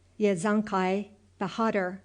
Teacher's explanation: with the accent on the last syllable, Bahadur, and the A sounded like A in hark.